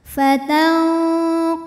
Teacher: maka nun dibunyikan samar-samar siap-siap ke qaf disertai dengung, dengungnya besar. Fatanqalibu, bu mad tabi'i zahiri karena ada waw sukun didahului dhammah, maka ba panjang 2 harokat. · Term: ikhfa ab'ad